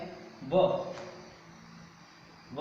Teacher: व का उच्चारण स्थान आपको लिखना है दंत और ओष्ठ, दंत और ओष्ठ।